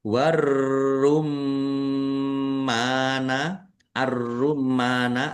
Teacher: ro ditandai rnya ada tasdidnya rnya dibaca dobel ditekan biar tampak dobelnya warum Mim tasdid dibaca ghunah atau mendengung ditahan di biar tampak mendengungnya. · Roknya dibaca double, ditekan biar tampak doublenya.